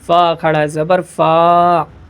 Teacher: یہ جو کھڑا زبر ہے ایک الف کے برابر کھینچ کھینچ کر پڑھنا ہے